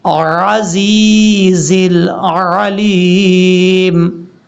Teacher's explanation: عزیز میں جو عین ہے اس کو آپ نے کلیئر کرنا ہے، حمزہ کی آواز نہیں آنی چاہیے